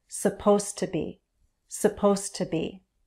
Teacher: Stress is on supposed and then the base verb.